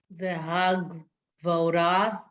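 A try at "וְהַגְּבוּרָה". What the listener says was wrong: Vu-ra, vu, ooh. You said vo. It came out. It sounded like bo to me, but it's hagavura.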